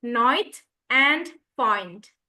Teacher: The long I word in words such as night and fine sounds more like a softer oi sound. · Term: long I sound